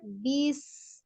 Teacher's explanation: Alirkan dulu as-sofirnya sinnya. Bis. Tapi bukan dipanjangkan bis.